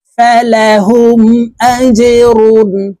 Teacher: জিম কলকলার হরফ নিচের দিকে ধাবিত করে ধাক্কা দিয়ে উচ্চারণ করতে হবে।